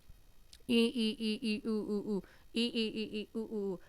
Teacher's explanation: बंद रहता है। मुख जो है समृत स्वर में पूरा का पूरा बंद रहता है। · मुख द्वार बंद, कम खुलता है, छोटा होता है। जीभ को ऊंचा लेकर जाके तालू के पास